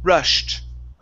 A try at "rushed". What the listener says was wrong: now what you're doing with the T, you're touching your tongue to your teeth, saying rushed. Okay, using a Spanish T.